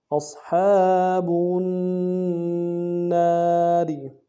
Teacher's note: الف دال میں کھینچیں گے، وا کو باریک ادا کریں گے، وقف میں را کو موٹا کریں گے